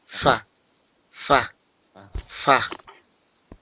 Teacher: একটু হালকা আওয়াজ হা মতো বের হবে